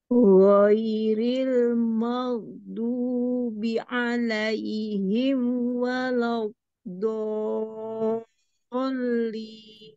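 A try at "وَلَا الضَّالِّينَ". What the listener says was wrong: masih kurang sedikit nih. Tambahin sedikit lagi. Yang do-nya. Dolin.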